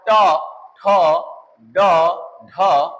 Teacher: जीभ का अगला हिस्सा हल्का मोड़ खाता है ऐसा वक्र बना करके ऊपर जाके स्पर्श करता है · तो जब आप ट बोलते हो तो यहाँ पर ट, ठ, ड, ढ, ये जीभ का अगला हिस्सा इन सब में मुड़ करके ऊपर स्पर्श करता है जाकर के, तो ये आपका इसके अंतर्गत चले जाएंगे मूर्धा। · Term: मूर्धन्य वर्ण